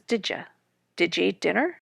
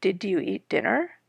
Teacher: the y sound of you has become a j, and the following vowel is reduced to a